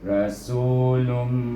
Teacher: Iaitu bunyinya lun, tetapi dia bertemu dengan tanwin, bertemu dengan huruf mim, maka kita baca dengan idgham ma'al gunnah, dengan gunnah sepanjang 2 harakah dengungnya, iaitu rasulum.